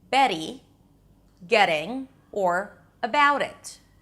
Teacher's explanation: the flap T, a T between two vowels